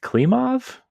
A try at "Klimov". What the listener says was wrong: I think this K is silent. I think it's Limov.